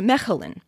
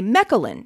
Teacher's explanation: the dutch ch is that glottal fricative again